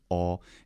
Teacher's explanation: have the Omega quality so the Omega quality is all and it is always long and it's going to be generally more open than the two other back vowels